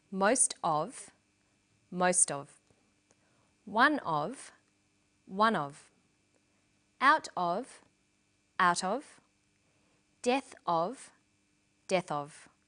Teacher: Notice that of in these phrases is unstressed.